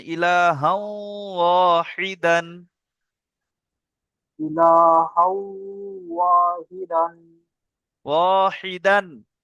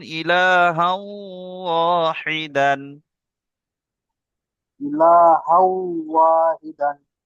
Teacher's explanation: হাউটা গুন্না নাকে তুলুন